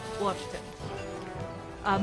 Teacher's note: notice that I use that T in the word often, and that sometimes pops up in a Jersey accent